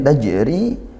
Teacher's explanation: Kemudian tajri jim ber jim sukun e huruf jim huruf qalqalah dipantulkan maka dia mantul ya qalqalah sugro qalqalah yang ringan.